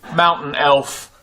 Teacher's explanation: This is when I'm replacing T with the glottal stop.